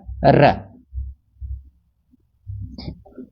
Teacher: र के उच्चारण में ऐसा महसूस होता है जैसे यह जीवा से लुढ़क रहा हो। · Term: लुंठित वर्ण